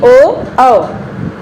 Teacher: होठ हमारे गोल हुए और गले से भी आओ, कंठ से भी आवाज आई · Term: कंठ ओष्ठ